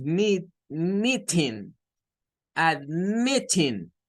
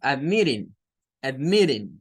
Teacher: Las T's en medio de las dos vocales se suele dar este fenómeno de reemplazarlas por la flap T.